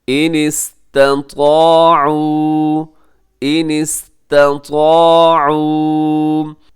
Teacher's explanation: آپ نے اس کو پہلے تا کو باریک رکھنا ہے اور طا کو موٹا رکھنا ہے